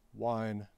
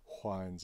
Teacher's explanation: the one that I'm most often made fun of for is that I distinguish W from wh